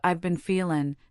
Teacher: I've been feeling can contract to I've been feelin', dropping the G sound at the end